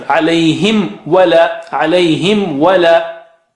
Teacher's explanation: Sometimes you may miss that in an effort to round the lips, you may miss the merging of lips.